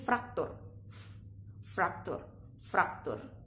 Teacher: penyebutan F di fraktur itu penyebutannya adalah antara bibir dan Gigi